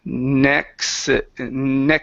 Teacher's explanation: you added a vowel sound in between the K and the S sound so the word is next next